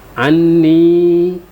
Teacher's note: Kemudian di situ ada nun bertasdid, hukumnya adalah wajibul gunnah. Nun bertasdid itu wajib didengungkan